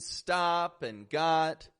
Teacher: This ah sound used in the short O, in stop and got, is used so widely in spoken English